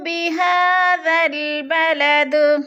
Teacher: درمیان میں الف زائد ہے، ذال کو لام کے ساتھ ملا کر پڑھیں گے،